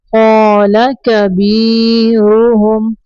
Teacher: रा के ऊपर पेश है, रा को ऊपर पढ़ेंगे।